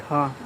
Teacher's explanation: चलिए अगला क्वेश्चन है 183 84 नंबर कि मूर्धन्य महाप्राण अघोष व्यंजन वर्ण का उदाहरण कौन सा है? तो मूर्धन्य होना चाहिए, महाप्राण होना चाहिए, अघोष होना चाहिए